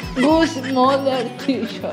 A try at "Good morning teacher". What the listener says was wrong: No es good mother, es yeah.